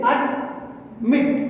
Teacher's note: Here we are giving the stress on the second syllable, so we are adding T.